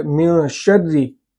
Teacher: را کے نیچے زیر ہے اور را کو یہاں پر باریک کر کے پڑھا جا رہا ہے